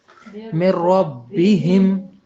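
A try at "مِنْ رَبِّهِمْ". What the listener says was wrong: من ربہم. اس میں کیا ہوا کہ نون کی آواز تک نہیں آئی، یعنی مکمل داخل ہو گیا.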